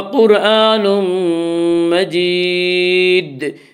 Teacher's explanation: جب ان حروف کے اوپر جزم آئے تو ان کو پڑھتے وقت ان کے مخرج ٹکر کھا کر الگ ہو جاتے ہیں۔ تو مجید میں جب ہم وقف کریں گے تو دال ساکن ہو جائے گا، جب دال ساکن ہوگا تو دال میں قلقلہ ہوگا